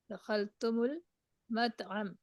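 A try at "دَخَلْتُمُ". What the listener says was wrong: ये दखल तुम था ना, जब भी तुम वाली कोई मीम साकिन आती है तो उसको पेश दे के आगे मिलाते हैं। लम दखल तुम मुल मत अमा, मीनिंग क्या होगा?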